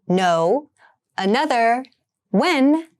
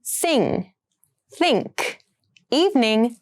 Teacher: all the sounds are nasal which means they're produced in the nose